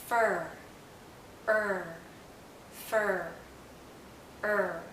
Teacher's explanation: For most vowels, the tip of our tongue is down and close to, if not touching, the back of our bottom front teeth. For the tip of our tongue is actually curled backward, and as it curls back, the central part of our tongue goes up · our mouth is very closed and our tongue is generally in a high position. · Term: last central vowel sound